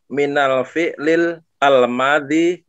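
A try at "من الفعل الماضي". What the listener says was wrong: ketika Pak Ahmad bilang minal, berarti sudah baca alif lamnya, jadi tidak usah minal al-fi'li,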